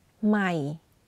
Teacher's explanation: you can hear that my voice goes in a lower pitch when pronouncing the word · the voice is constant but for low tone you add a slight falling low pitch